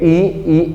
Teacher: ई में आपका कम खुलेगा, ऊ में आपका कम खुलेगा, ठीक है, मतलब लगभग क्लोज रहेगा